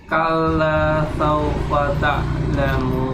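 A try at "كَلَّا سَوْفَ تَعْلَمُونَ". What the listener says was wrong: Saufa. Nah, nggak usah terburu-buru. Kalla saufa karena walaupun dia bukan panjang ya, tapi kita dalam melafalkan hurufnya itu jangan sampai setengah makhraj, artinya setengah bunyi ya, setengah harokat.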